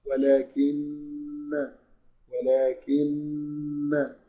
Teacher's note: مشدد او حرف اغن الغنه دي هي مخرج للنون والنون الميم والنون المشددتين وتخرج من الخيشوم يعني من الانف